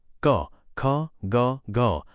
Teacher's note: આનો ઉચ્ચાર કરતી વખતે કંઠમાંથી ધ્વનિ નીકળે છે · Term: કંઠ્ય